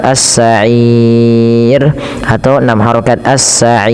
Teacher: Dan inilah yang dinamakan dengan mad arif sukun. Panjangnya boleh dua, boleh empat, boleh 6.